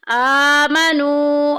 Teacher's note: آ کے اوپر دیکھیں کھڑی زبر آ گئی، ایک الف کے برابر لمبا کریں گے۔ نو میں دیکھیں واو ساکن پیچھے پیش، واو مدہ کا قاعدہ جاری ہو رہا ہے۔